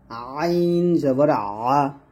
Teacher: আইন উচ্চারণ করতে হবে গলার কন্ঠের একটু উপর থেকে বা মাঝখান থেকে হ্যাঁ মাঝখান থেকে আমরা চাপ দিব চাপ দিয়ে চিকন করে আমরা